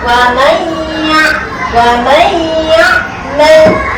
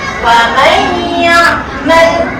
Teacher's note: Yang ni kita kena bunyikan nun mati ni berserta dengung, masukkan dalam ya. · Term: idgham ma'al gunnah